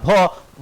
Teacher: भ मतलब क्या दोनों होठ सट रहा है जब होठ सट रहा है तो मतलब होस्ट ओट सट रहा